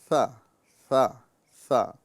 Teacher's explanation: لہذا یہ جو حرف نظر آ رہا ہے یہ سا ہے، اور سا کے اندر میں سیٹی نہیں ہوتی، صرف ہوا نکلتی ہے